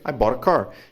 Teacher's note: o T no inglês americano passa com som de R, vira Ra